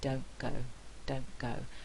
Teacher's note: in the phrase don't go we actually have two alveolar consonants here and they are likely to assimilate